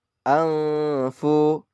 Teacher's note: nun mati bertemu dengan fa ikhfa. Bacanya samar-samar